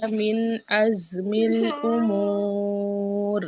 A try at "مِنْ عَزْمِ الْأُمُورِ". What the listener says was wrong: আইনটা আসে না, মিন আজ, মিন আ। মাখরাজে যায় না, হামজার মাখরাজের কাছে আছে। মিন আজমিল উমুর। ঠিক আছে, আইন নিয়ে একটু কাজ করতে হবে ইনশাল্লাহ।